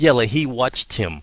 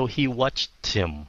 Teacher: cái chữ him cái chữ H nó rất là yếu